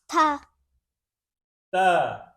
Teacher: it's pronounced from the tip yeah tip of the tongue touching the roots of the top two front teeth